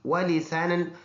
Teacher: واو دونوں ہونٹوں کی گول ہونے سے سین سیٹی والا حرف ہے ، نو نون واو دو زبر، نو ناک میں آواز لے